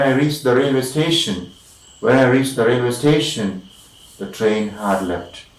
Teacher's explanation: So the first part incomplete, dependent, subordinate clause is taking the rising tune. The sound is going up.